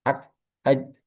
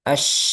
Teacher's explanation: Rakhawah itu ee kebalikannya syidah. Jadi kalau kaf dan jim ini macet ak aj kalau syin mengalir. As kebalikannya ya. · Kalau kaf jim ini pendek suaranya. Kalau shin panjang. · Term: syiddah